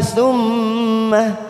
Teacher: mim yang bertasdid bacaan gunnah kita tekan 3 ketuk.